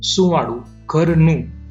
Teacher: અહીંયા અનુસ્વાર હોવા છતા શબ્દના ઉચ્ચારમાં ખાસ કંઈ ફેર પડતો નથી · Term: કોમળ અનુસ્વાર